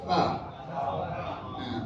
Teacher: দাঁতের আগা নিচের ঠোঁটের পেটের সাথে লাগিয়ে আলতো করে হালকা করে উচ্চারণ করতে হবে